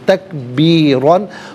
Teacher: را پر دو زبر کی تنوین ہے، پر کر کے پڑھا جائے گا